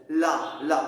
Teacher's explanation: ल बगल से सांसे निकलती है। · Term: पार्श्विक व्यंजन